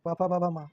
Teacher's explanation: प म ये ओष्ठ है। इसमें होठ मिल जाते हैं, जुड़ जाते हैं